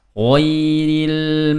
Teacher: Nah, ada ghain, ghairil terdengar tebal dan dilepas. Ghairil ya, 1 lah kalau durasinya 1 sama dengan sin.